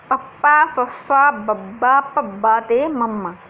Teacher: ਬੁੱਲ ਜੁੜਦੇ ਆ ਤੇ ਆਪਣੇ ਜਿਹੜਾ ਅੰਦਰਲੀ ਹਵਾ ਉਹ ਅੰਦਰ ਰੁਕ ਜਾਂਦੀ ਹੈ।